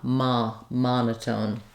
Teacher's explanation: you really want to think of that as an unrounded open a sound · And so that's the first thing to realize, that you may see that letter O and think of something more like an O or something more rounded, that you really want to think of that as an unrounded, open ah sound. That's why I've rewritten it for you here with letters AH to just think of that ah sound. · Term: ah vowel